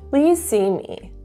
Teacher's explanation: notice the downward intonation at the end again indicating confidence and authority